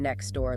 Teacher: next door might become next door, losing the T. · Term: elision